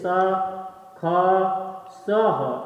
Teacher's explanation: इसमें वायु घर्षण करती हुई निकलती हैं। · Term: उष्म ध्वनियां